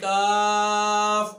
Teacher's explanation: मुंह की तरफ जो जुबान का हिस्सा है उस हिस्से को ऊपर तालू से मिलाने से छोटा काफ यानी काफ अदा होता है